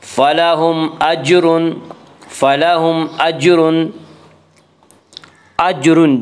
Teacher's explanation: اجر جیم میں قلقلہ ہوگا، جیم حروف قلقلہ میں سے ہے۔